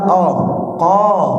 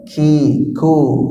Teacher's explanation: kaf itu tidak qalqalah, tidak isti'la